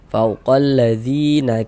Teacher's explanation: Sehingganya dzi dibaca panjang mad thobi'i panjang dua harakat